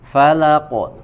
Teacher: dia disukunkan disifati dengan sifat Qalqalah ya dipantulkan